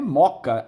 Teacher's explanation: embora escrevamos com 2 Os, pronunciamos um só. está ocorrendo uma crase.